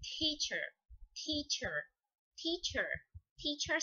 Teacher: Outro ponto importante da palavra teacher é a quantidade de ar que você solta na primeira sílaba